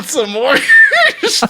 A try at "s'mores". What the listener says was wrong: Sm. You're adding the letter U in between the letter S and the letter M. Yeah, it's SM. S'mores. Not s'mores. S'mores.